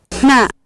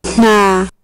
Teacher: All these nasals that you heard were voiceless nasals